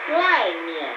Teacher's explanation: The fourth tone and the light tone